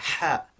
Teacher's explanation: Now this is approximately our English H, but not quite. The way to pronounce this is that it is by a constriction of the throat. So the muscles that we use for swallowing, they actually tense up, and it makes the throat constrict slightly, which results in the air rushing out much quicker than it ordinarily does for H.